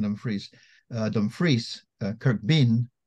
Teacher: American English tends to emphasize the first syllable of words, whereas the Scots emphasize most normally the second syllable.